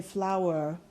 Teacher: with an American are at the end we would say flour do you hear the R sound uh in that it's just not explicitly pronounced